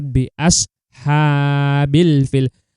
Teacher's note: Asha ini adalah hukum bacaan mad tabi'i atau mad asli ya. Dibaca itu 2 harokat.